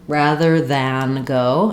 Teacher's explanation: if I'm trying to make it very clear that I'm saying the word than, I can say, rather than go, and use that clear ah sound.